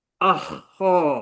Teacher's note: Suara dia terlepas eh. Sifat rakhawah.